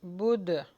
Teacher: دال کے اوپر قلقلہ ہوگا